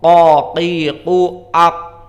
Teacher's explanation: Dia itu sifatnya di atas. Di saat kita menyebutkan qaf, qaqiqu aq, maka lisan kita yang belakang itu berada di atas dengan langit-langit yang ada di atas. Maka ini dinamakan sifat isti'la.